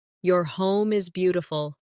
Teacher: Stress beautiful to make the compliment sound genuine.